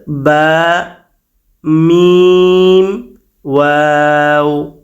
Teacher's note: বার জন্য মিম এর জন্য ও এর জন্য আমাদের শুধুমাত্র ঠোট ব্যবহার করতে হলো ঠোট কিন্তু এখান থেকে হটে নাই তিন নাম্বার চলে